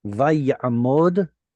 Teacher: So it's not a matter of lengthening. It's just we're going from an I vowel to an ah vowel, and it's because of the guttural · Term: The guttural ayin